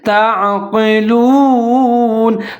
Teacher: تا اور عین ملا کے پڑھیں گے اور عین کو ظاہر کر کے پڑھیں گے، آگے قاف موٹے والا ہے، اس کے نیچے زیر ہے، اس کو بھی ظاہر اور پر کر کے پڑھیں گے۔